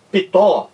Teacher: temos a impressão de que existe um I entre o P e o T